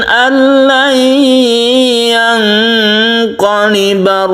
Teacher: Demikian juga ini tidak berdengung, nun mati bertemu dengan lam, kita sebut dengan idgham bila gunnah. Idgham artinya masuk suara dari nun mati ini melebur atau masuk ke huruf lam. Itu namanya idgham bila gunnah, tanpa berdengung, artinya tidak kita panjangkan, langsung tasydid lam.